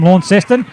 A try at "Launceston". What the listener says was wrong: You don't pronounce it with a W.